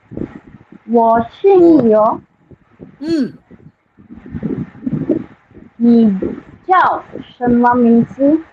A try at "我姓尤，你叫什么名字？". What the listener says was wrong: 你叫什么名字？字 is a neutral tone. 你叫什么名字？ Don't put any emphasis on it.